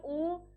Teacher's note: ऊ को बोल के देखो, वो होठ से उच्चारण होगा।